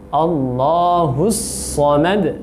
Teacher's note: Kemudian huruf so-nya ditebalkan agar tidak terjadi kesalahan seperti huruf sin